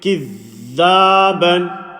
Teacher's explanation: So the standing fatha, we're making the a sound. Remember, standing fatha is a stretched vowel, exactly the same as alif madda